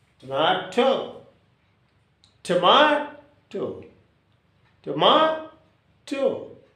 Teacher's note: there are 3 syllables and the accent should be on ma.